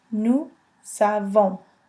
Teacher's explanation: The S liaison is repeated here to make the Z sound.